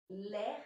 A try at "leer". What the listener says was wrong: Leer. Attention à prononcer les deux lettres. Les deux E. Leer.